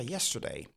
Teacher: Le stir est prononcé d'une manière beaucoup plus légère. On simplifie le son. On dit sir.